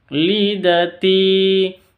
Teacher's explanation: ti-nya panjang 2 harokat karena ada ya sukun diawali dengan kasroh.